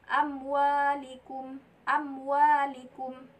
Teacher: Tidak boleh dibaca amwalikum. Ada mim mati ada mim sukun bertemu dengan waw. Tidak boleh dibaca dengan berdengung, tapi dibaca dengan jelas. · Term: izhar safawi